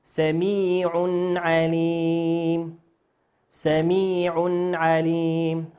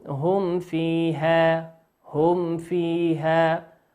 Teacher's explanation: كل هذه نون ساكنة وميم ساكنة، الغنة تكون فيها ناقصة. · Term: الغنة ناقصة